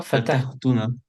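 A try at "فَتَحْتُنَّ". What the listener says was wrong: Fatahtouna comme ça. Oublie pas Sheta, tu l'oublies tout le temps.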